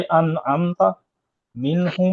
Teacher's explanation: इजहार यानी बिला गुन्ना अतबाक शफतैन से मीम को ज़ाहिर करके पढ़ना। मीम और बाप के अलावा मीम के बाद जो भी हर्फ आएगा तो मीम को ज़ाहिर करके बिला गुन्ना पढ़ेंगे। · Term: इजहार शफवी